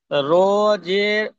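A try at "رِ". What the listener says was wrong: রো নয়, র র, র ইয়াজের রি।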